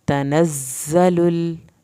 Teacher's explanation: زا کو سختی سے پڑھنا ہے، زا کی شد ادا کرنی ہے، لام کو آپ نے ہلانا نہیں ہے۔